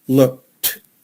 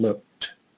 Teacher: the ED sound like a T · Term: T sound